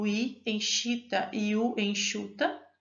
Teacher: a língua está mais alta por isso trato vocal está mais fechado para o escape do ar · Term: fechados